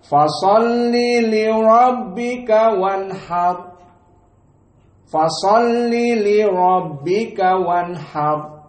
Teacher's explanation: Maka perhatian di sini li rabbika, ra-nya tafkhim karena dia fathah. Wanhar, ra-nya tafkhim karena dia disukunkan dan sebelumnya fathah.